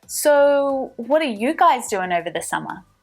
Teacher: let's move the stress back to the subject you guys